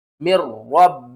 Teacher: را سے پہلے زیر ہے تو یہاں پر ہم ایک مرتبہ را کو باریک پڑھیں گے اور دوسری مرتبہ موٹا کر کے پڑھیں گے ۔ میم را زیر مر را با زبر رب با زیر